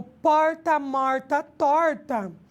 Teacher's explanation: eu tenho uma marcação intensa no R, que é chamado nosso R retroflexo, ou também conhecido como R caipira